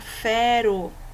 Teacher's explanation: o r ele tem um som fraquinho ele vai só dar uma tremida